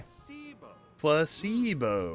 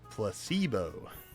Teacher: The stress is on the middle syllable.